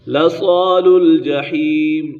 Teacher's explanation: صاد حرف مستعلی میں سے صاد کو پر پڑھنا ہے